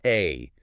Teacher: A. And it represents that very specific low front vowel sound in words like bat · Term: ash